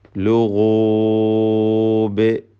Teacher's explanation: ബഇൽ ഖൽഖല കുബ്ര നൽകി ശബ്ദം ഹറക്കത്ത് പോലെ ചലിപ്പിച്ച് വ്യക്തമാക്കി വഖഫ് ചെയ്യുക